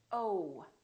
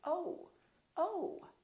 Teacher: So it's actually two sounds, it's O and U together. So you have to move your mouth from O to U